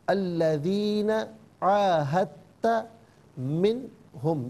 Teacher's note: یہاں عاہدت میں دال کی آواز نہیں بلکہ تا کی آواز کو ادا کیا جائے گا